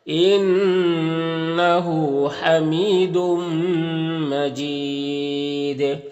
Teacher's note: طول کہتے ہیں 3 سے 4 الف کے برابر کھینچ کر پڑھنے کو، توسط کہتے ہیں 2 الف کے برابر کھینچ کر پڑھنے کو، اور قصر کہتے ہیں 1 الف کے برابر کھینچ کر پڑھنے کو۔ اور جب یہاں پر وقف کریں گے تو دال میں قلقلہ بھی ہوگا